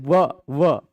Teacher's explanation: बोलेंगे तो दांत और ओठ टच होगा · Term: दंतोष्ठ